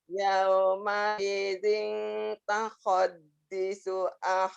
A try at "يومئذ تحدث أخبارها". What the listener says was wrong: Tuhad bukan tahod.